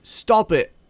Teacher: This is usually fast. This is a glottal stop, such as stop it. It's usually used in lazy speech, such as Cockney.